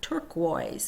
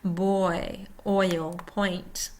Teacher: And in Canada, that's a backwards C with a Y. Tongue starts mid-back, ends high front, lips start round and spread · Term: OI sound